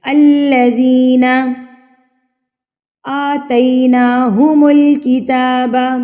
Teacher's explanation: آ کے اوپر کھڑی زبر ہے تو اس کو ہم نے 2 حرکات کے برابر کھینچنا ہے